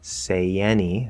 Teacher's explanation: Say any, there's a small Y linking.